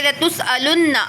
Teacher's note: لتسألن، آ کو نہیں کھینچیں گے